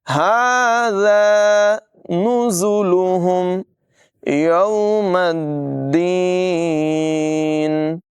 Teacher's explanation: ذال جو ہے ہمیشہ باریک آواز میں اور بغیر سیٹی کے پڑھا جاتا ہے